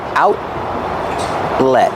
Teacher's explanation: the final T is a stop T also put your tongue up and stop the air